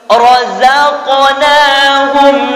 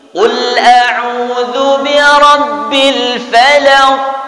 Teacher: razaqna mati di tengah-tengah, maka dia qalqalah sughra, pantulannya kecil.